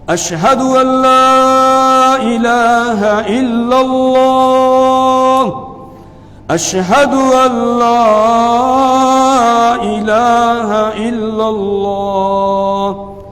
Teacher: لام ہے، اس لام کے اوپر خالی کھڑا زبر ہے، اور کھڑا زبر کو ایک الف کے برابر کھینچنا ہوتا ہے ، یعنی اتنا جتنے میں آدمی مٹھی بند کر کے کھولتا